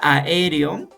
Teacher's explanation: la a y la e no son vocales idénticas pero son vocales abiertas por lo tanto porque son vocales abiertas tienen que separarse · es la secuencia de vocales que se pronuncian en sílabas distintas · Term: yato simple